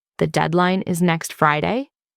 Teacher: Your voice rises at the end, turning declarations into questions. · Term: upward inflection